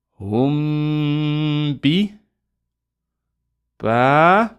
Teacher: So we're going to pronounce the ghunna, hold it for 2, and then pronounce the ba. We release with the ba.